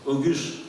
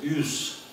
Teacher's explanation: Вот вам долгое гласное, которая появилась при выпадении одного из вот тех самых звуков согласных, а именно «г».